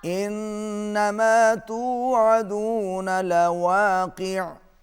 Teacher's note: واو پر ہونٹ گول ہوں گے اور قاف کو اچھی طریقے سے ادا کیجئے